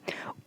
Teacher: वृत्त मुखी स्वर होता है दूसरा हमारा अव्रत मुखी होता है वृत्त मुखी में इसमें होठ हमारा गोल रहता है और अवत मुखी में होठ हमारा गोल नहीं रहता है ऐसे · अगर आप ऊ का उच्चारण करेंगे तो आपका होठ उसमें गोल का गोले का स्वरूप ले लेता है।